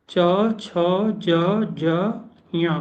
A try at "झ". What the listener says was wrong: लो, ये जा झा में कोई अंतर क्यों नहीं आता है? दोनों अल्प प्राण निकल रहे हैं, जबकि एक अल्प प्राण है, एक महाप्राण है। मतलब ये जो बोल रहे हैं ना, ये नुक्ता है, उर्दू एक्सेंट।